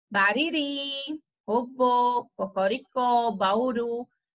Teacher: perceba quando você vai falar essas palavras, ao final ela vai ter um som mais forte, vai ser mais forte o final dessas palavras. A última sílaba ela vai ter aí uma tonicidade maior. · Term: palavras oxítonas